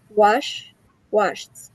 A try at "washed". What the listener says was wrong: So wash, washed. I want you to enunciate the t.